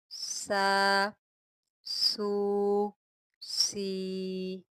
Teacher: سین جو ہوتا ہے یہ حروف صفیریہ میں سے ہوتا ہے، یا آپ سیٹی کے ساتھ پڑھیں گے